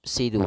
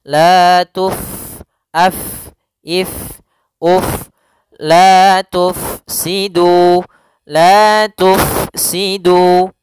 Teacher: fathah ketemu Alif tufsidu di sini pada lafal Fa yang sukun Huruf Fa sukun tidak boleh dibaca dengan Pa no tidak boleh ya harus dibaca dengan adanya aliran tidak boleh